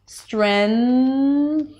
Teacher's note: because the N appears just before a th sound, then you can place the N on the teeth, preparing for the th sound. Strength. And then you're just releasing the tongue for the th strength. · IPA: strenθ